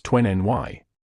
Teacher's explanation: In casual American conversation, when the letter T follows the letter N, speakers frequently drop the T entirely. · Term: dropped T